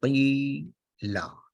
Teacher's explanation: the short vowel which is kasra change into a longer vowel, therefore no harka is there.